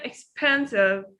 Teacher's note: So we stress on the second part in the second syllable.